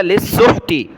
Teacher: سین کو ہا کے ساتھ ملایا، ہا کو گلے سے نکالا